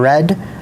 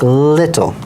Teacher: those are both like a fricative in the sense that you can extend them but they're even more open and less turbulent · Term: approximants